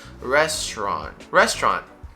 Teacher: the T kind of turns into a very soft ch just because of a really nice transition that it creates to go into the next part, to the rest of the word.